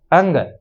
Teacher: जब हम अंग का उच्चारण करते हैं ना लास्ट में, तो उसमें हमारे नाक का भी प्रयोग किया जाता है, क्योंकि ये नासिका और कंठ दोनों जगह से इसका उच्चारण होता है।